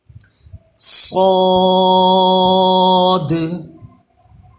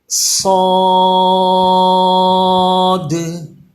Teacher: صاد پہ بھی سیٹی پیدا ہوتی ہے لیکن یہ پر ہے